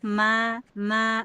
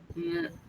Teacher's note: Tapi kalau nun na itu suara keluarnya lewat hidung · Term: gunah asli